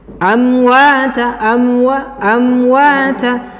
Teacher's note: apabila mim sukun bertemu dengan huruf waw, maka harus dijelaskan mim sukunnya. · Perbedaannya, huruf mim itu dirapatkan, huruf waw itu dibuka.